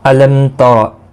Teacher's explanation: علم تر، میم ساکن کے بعد تا آیا ہے، اظہار شفوی ہوگا، رو زبر کی وجہ سے پر پڑا جائے گا